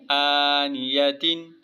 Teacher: یہاں غنہ اس لیے نہیں ہوگا کہ آگے حروف حلقی کے 6 حرفوں میں سے حمزہ آ رہا ہے